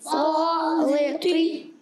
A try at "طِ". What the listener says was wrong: طا. اچھا اسے طا کو موٹا رکھنا ہے. طا زیر طی